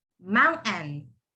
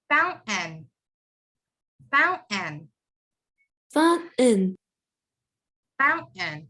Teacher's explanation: So the T becomes silent and you would replace it with the N. Mountain. The TAIN, all of that turns into N. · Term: silent T